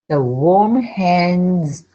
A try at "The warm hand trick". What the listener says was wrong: No S. Hand trick. Hand trick. We put the D and the T together. Hand trick.